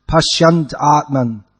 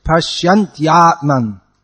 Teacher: the ya has to come. It's not that it's dropped. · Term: ya sound